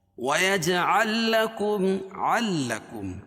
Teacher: عین کو دوسری والی لام میں ملائیں گے اور لام کا لام میں یہاں ادغام ہوگا